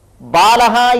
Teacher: ಶ್ರುಯತೆ ಅಕಾರಹ ಅತ್ರ ಪ್ಲುತಃ ಬಾಲಹ ಇತ್ಯತ್ರ ಆಕಾರಹ ಅಸ್ತಿ ಲಕಾರೋತ್ತರಹ ಅಕಾರಹ ಅಸ್ತಿ ತತ್ರ ಆಕಾರಹ ದೀರ್ಘಹ ಅಕಾರಹ ಹೃಸ್ವಹ